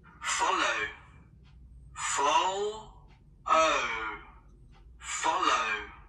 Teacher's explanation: Từ này có hai âm tiết, trọng âm rơi vào âm đầu tiên các bạn nhé.